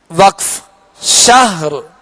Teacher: آخر میں را کو ساکن کر کے آواز اور سانس توڑیں گے، یعنی را پڑھ کر صرف شاہ یوں وقف نہیں بلکہ شہر.